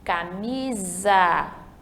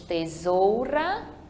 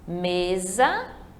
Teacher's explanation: S entre duas vogais, tá? Quando tiver duas vogais, não mais consoante, a gente vai ter um S, mas ele vai ter o som do Z